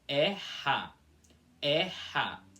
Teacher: Então, como vocês podem perceber aqui, aqui nessa parte da folha, eu tenho um e com acento agudo seguido de a, que em balorano fica com som de erra. E vocês podem perceber que existe uma aspiração aqui no meio · É só uma aspiração leve, sem fazer movimento algum com a língua.